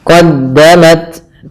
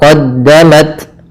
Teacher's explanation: taknya sifat hamas, ada sedikit aliran dari nafas kita. Qaddamat, sedikit saja.